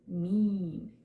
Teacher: But if we say mean, you can feel your tongue not touching the top of the roof of your mouth or touching your teeth, but it goes up and forward. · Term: long I sounds